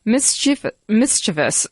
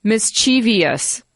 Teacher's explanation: the 3 syllables. Emphasis on the first.